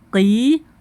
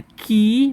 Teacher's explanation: kalau kaof aksal lisan pangkal lidah bertemu dengan langit-langit yang lunak kalau Kaf bertemu dengan langit-langit keras dan lunak berbeda ya Qi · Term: qaf